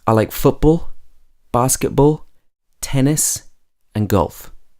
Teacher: on the first three, my voice is going up in pitch, and on the last one, my voice is going down.